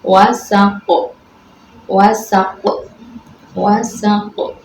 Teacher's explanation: wasaq dibaca Qalqalah Kubra, sebab Qaf dimatikan